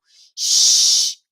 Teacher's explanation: encostando no céu da boca mas eu faço o biquinho sh prolongo o ventinho e não vibra o pescoço